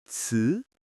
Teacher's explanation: Start low middle, rise a bit, and stop. 词. If the rise is too sharp, it sounds unnatural. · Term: second tone